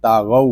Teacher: یہاں واو لین ہو رہا ہے، اس کو ہم کھینچ کر نہیں پڑھیں گے